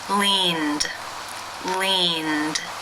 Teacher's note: The final sound of the verb in infinitive form is the n consonant sound. This is a voiced consonant. Therefore, it is case 2, where the ed is pronounced as the d sound.